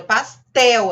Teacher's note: Pastel, a sílaba tônica é o tel, termina em L.